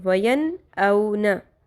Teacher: تو نون ساکن کی آواز کلیئر کر کے پڑھیں گے